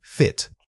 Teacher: Focus on the initial consonant F, making sure it's a clear friction of air over your teeth. Then drop into that relaxed short vow quickly.